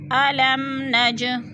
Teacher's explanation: علم نج، اب نج جیم پہ قلقلہ ہے، جیم ساکن ہے اور حروف قلقلہ میں سے ہے تو جیم کو ہم نے ہلا کر پڑھنا ہے